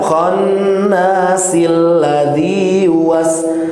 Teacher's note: kalau bapak-bapak mau menyambung 4 dan 5, ayat 4 dan juga ayat 5, maka al-nya hilang, a-nya hilang.